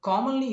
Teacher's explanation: commonly is a trisyllabic word, but the stress is on the first syllable